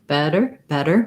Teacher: we have the red tent vowel in better first syllable stress and then we end with our er sound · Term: flap T